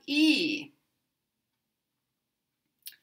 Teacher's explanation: E is tense, it's high, and it's closer to the front